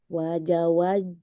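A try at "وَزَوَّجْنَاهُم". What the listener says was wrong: Wazawwaj. Wazawwajnahum. Wazawwaj. wazawwaj. Wawunya itu tasydid. Jadi tasydid itu maksudnya dua huruf. Wazawwaj. Jangan wazawaj. Wazawwaj.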